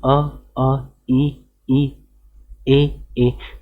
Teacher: यहीं पे अर्ध आकृति में हमने क्या देखा कि उसमें जब भी हम अ, ई, ए का उच्चारण कर रहे हैं सो इसमें जो आकृति है वो कैसे, गोल नहीं बन पा रही है